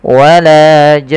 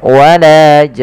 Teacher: Nah, di sini mad arid disukunnya dipanjangkan 6 harakat, Baru untuk nunnya karena dia ada gunnah sambil ditahan ya